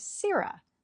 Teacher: Shakespeare's verse itself tells us that the emphasis falls on the first syllable